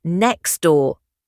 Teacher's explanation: The T at the end of next door disappears. It becomes next door. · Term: Elision